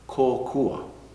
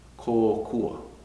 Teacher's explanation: You'll notice the longer o, or the macron is over that o, the kahako.